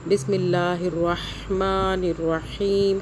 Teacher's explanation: ہا کو حلق سے پڑھنا ہے